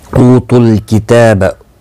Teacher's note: वाव मद्दा है, एक अलिफ की मिकदार के बराबर खींच कर पढ़ेंगे। तुल किताब ता के ऊपर खड़ी ज़बर है, एक अलिफ की मिकदार के बराबर खींच कर पढ़ेंगे।